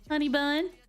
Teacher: Bun has like 2 syllables at that point. Or it's like a diphthong. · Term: Southern accent